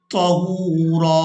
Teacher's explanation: اگر ہم وقف کریں گے تو پھر ہم را کو ایک زبر کے ساتھ پڑھیں گے اور ایک الف مقدار کھینچ کر ادا کریں گے